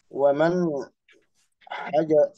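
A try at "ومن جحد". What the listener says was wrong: ini kebalik sih huruf-hurufnya banyak yang kebalik.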